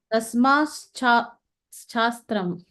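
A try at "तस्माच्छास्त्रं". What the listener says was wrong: No, so it is tasmat plus shastram. So tasmat chatram. The sh doesn't come at all. Tasmat chatram.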